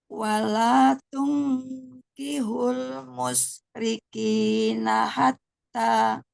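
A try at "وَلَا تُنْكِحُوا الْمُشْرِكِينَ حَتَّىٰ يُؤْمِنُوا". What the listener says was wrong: Ini kayak salah mau berhenti tuh musyrikin. Nah, kepanjangan itu kinya ya. Dua aja. Ini kan ngayun musyrikin hatta. Jadi seolah kayak mau berhenti tapi dia lanjut.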